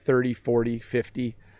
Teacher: By the way, flap T is when you say things like 30, 40. You hear how the T sounds more like a D